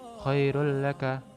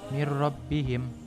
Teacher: maka harus dibaca idgham dengan tidak disertai dengungan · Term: idgham bila gunnah